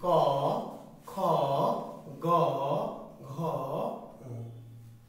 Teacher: স্পর্শ স্থানের নাম কণ্ঠ। কার কার সাহায্যে বা কোন কোন প্রত্যঙ্গের সাহায্যে? তার উত্তর হচ্ছে কণ্ঠ প্লাস জিহ্বা মূল বা জিহ্বার গোড়া।